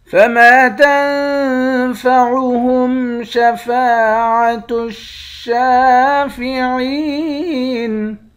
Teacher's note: نون پر اخفا کریں گے، فا کے بعد بھی الف ہے، اس الف کو بھی ایک الف کی مقدار کھینچ کر پڑھیں گے۔ یہاں بھی شین کے بعد الف ہے، اس کو بھی ایک الف کی مقدار کھینچ کر پڑھیں گے۔ · میم کے بعد الف ہے، الف حروف مدہ ہے، ایک الف کی مقدار کھینچ کر پڑھیں گے۔ نون پر اخفا کریں گے، فا کے بعد بھی الف ہے، اس الف کو بھی ایک الف کی مقدار کھینچ کر پڑھیں گے۔